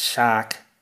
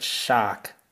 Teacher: it's quite similar to RP or BBC English, but this A sound becomes a lot longer. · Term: weaker Australian accent